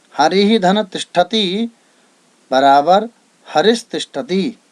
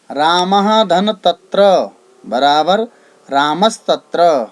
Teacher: विसर्ग के बाद त थ आए तो विसर्ग के स्थान पर स हो जाता है, अर्थात दंत्य सकार हो जाता है।